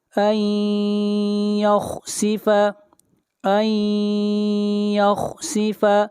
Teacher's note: نون ساکن کے بعد حروف یرملون میں سے یا ہے، ادغام مع الغنہ ہوگا، خا کو موٹا پڑھیں گے، خا حروف مستعلیہ میں سے ہے۔